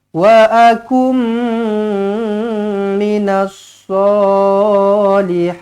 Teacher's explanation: Nun kosong bertemu dengan mim sabdu idgham ma'al gunnah, jumpa dengan mim sabdu, terus rapatkan bibir, dengungkan dua harakat.